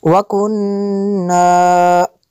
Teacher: نون مشدد ہے، یہاں پہ غنہ کرنا ہے۔